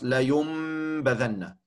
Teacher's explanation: alleen bij een noon. Ja, dan wordt die noon omgezet in een meme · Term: iqlab